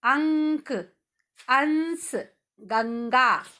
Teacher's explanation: यदि आप अपने मुंह के आगे हाथ लगाओगे और इन शब्दों को बोलोगे तो केवल हवा आपकी नाक से निकलेगी।